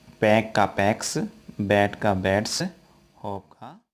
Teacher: पैक में कै, बैट में टे, होप में पे, ये तीनों ध्वनियाँ हैं वो वॉइसलेस हैं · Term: वॉइसलेस साउंड